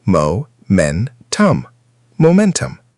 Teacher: Momentum. Stress on the second syllable.